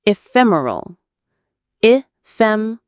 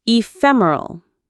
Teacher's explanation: The stress is on the second syllable, fem.